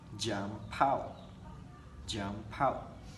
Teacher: You see the P in the word jump influencing the word out. So it became altered and sounded more like jump out.